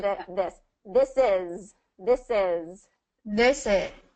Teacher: the tongue be behind the teeth for the S and then we pull the tongue a little bit out for the th